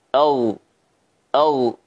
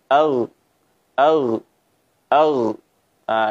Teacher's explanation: bagian pangkal lidah terdorong dan naik ke bagian langit-langit atas sehingga suaranya pun naik dan suara yang dihasilkan adalah tafkhim tebal